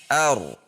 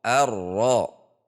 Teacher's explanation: Dalam hal ini hurufnya adalah huruf ro. Huruf ro memiliki sifat bainiah, yaitu antara tertahan dan tidak. Sehingga saat tasdid maka a masuk ke ro dengan ada tekanan ar.